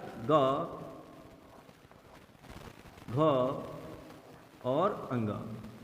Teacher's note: जब आप ग घ अंगा को बोलते हो तो एक तरह से ऐसा लगता है कि धमक गूंज आती है। तो सर यही तीन जो होते हैं ये होते हैं आपके सघोष व्यंजन।